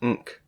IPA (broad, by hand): ŋk